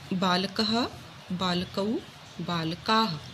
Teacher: ये जो 2 बिंदु होती हैं स्वर के बाद में, इनको विसर्ग कहते हैं और इनका उच्चारण ह की तरह होता है, ह की आवाज़ आती है